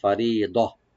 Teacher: এরপরে আল্লাহ রাব্বুল আলামিন ফারিদা ফা ওপেন রাখবেন, রি একালে টানবেন একটু পাতলা করে, আর দোয়াটাকে একটু ডিপ করে পড়তে হবে